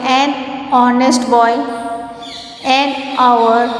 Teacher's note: H is a consonant, but here the word starts with the vowel O sound.